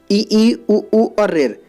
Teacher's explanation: ऐसे स्वर जिनको बोलने में मुख द्वार लगभग बंद रहता है। तो उसके एग्जाम्पल क्या हैं, ई उ और रेर, ये क्या कहलाते हैं, समृत कहलाते हैं।